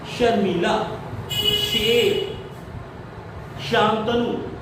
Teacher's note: हमारी जीभ धीरे से उठकर तालू में पहुंचेगी और तब अब आ जाएगी श। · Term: तालव्यशा